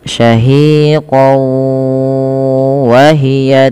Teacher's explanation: idgham artinya memasukkan yang dimasukkan di sini adalah tanwinnya kepada huruf wau kemudian ditahan disertai dengan gunah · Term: idgham bighunah, idgham bi gunnah